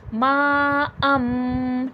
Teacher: नून साकिन या तनवीन की आवाज को मीम से बदल देना अगर यहां पर मीम नहीं होता तो हम कैसा पढ़ते मा अन लेकिन अब यहां पर मीम आ गया है तो तनवीन की आवाज़ को मीम से रिप्लेस कर देंगे। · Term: इखलाब